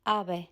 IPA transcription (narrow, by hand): 'a.β̞ɛ